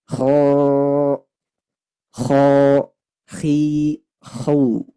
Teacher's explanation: Nah, jadi huruf kha termasuk huruf isti'ala, maka dia tebal suaranya.